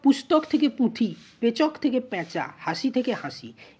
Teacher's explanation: স্বতঃস্ফূর্তভাবে স্বরধ্বনি আপনা আপনি অনুনাসিক হয়ে যাচ্ছে। পুস্তকের ক্ষেত্রে কিন্তু নাসিক্যী ভবনে যেমন নাসিক্য ব্যঞ্জনধ্বনি ক্ষীণ হচ্ছে, এখানে কিন্তু কোনো নাসিক্য ব্যঞ্জন নেই, অটোমেটিক্যালি অর্থাৎ স্বতঃস্ফূর্তভাবে স্বরধ্বনি কী হচ্ছে, আপনা আপনি অনুনাসিক হয়ে যাচ্ছে। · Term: শতনাসিক্যী ভবন